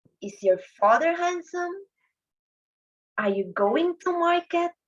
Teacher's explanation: group a was read in a rising intonation or going up pitch or tone